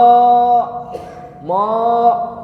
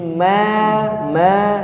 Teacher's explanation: Masih ada yang was-sama, mo, enggak. Was-sama, dibuka ya, jangan mo, tapi ma, sempurnakan bunyinya.